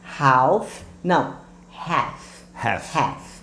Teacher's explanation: Esse L você não vai pronunciar, como se ele não existisse.